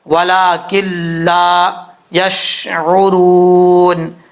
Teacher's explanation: نون ساکن کے بعد لام آ رہا ہے تو یہاں پہ بغیر غنہ کے ادغام ہوگا